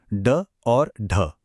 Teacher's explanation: इन्हें बोलने के लिए जीभ तेजी से ऊपर जाकर एक फ्लैप करती है। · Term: फ्लैप कॉन्सोनेंट्स